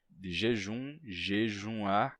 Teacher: Jejumar, tinha um U nasal